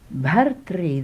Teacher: It is a R vowel, but sounds like Ri in North Indian pronunciation.